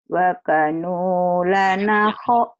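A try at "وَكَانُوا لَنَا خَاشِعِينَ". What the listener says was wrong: Lekap gini ada alifnya ya. Waka, ini ada alifnya. panjang. Nah, jadi panjang. Wa kanu lana khashi'ina. Bukan, bukan. Titik di bawah ini mah. Yang ho oh, titik di atas. Ini gak.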